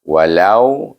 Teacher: Lau ini kerana waw ini adalah asalnya huruf mad, tetapi kalau dia berbaris di atas, kalau huruf mad dia berbaris depan sebelum waw ini. Tapi oleh kerana baris atas, dia dibaca dengan lin, iaitu satu harakah saja.